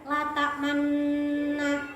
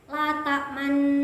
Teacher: Ismam itu bibir mencucu di tengah-tengah dengung.